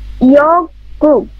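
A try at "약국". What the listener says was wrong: ইয়াক গুক। ইয়াক। এই যে ইয়ং এর উচ্চারণ হবে না, আপনি শুধু ইয়া নিচে গিয়কের ক ইয়াক। নিচে গু, আবার নিচের গিয়কের ক উচ্চারণ হবে ইয়াক গুক। ইয়াক গুক। ইয়াক গুক।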